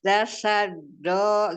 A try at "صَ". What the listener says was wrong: Dasyado. Tapi ngalir aja, jangan dijeda-jeda. Dasyado. Do. Itu kan dia sisi ya, sisi lidahnya. Bukan ujung lidahnya ya. Masih do, bukan do. Angkat pangkal lidahnya.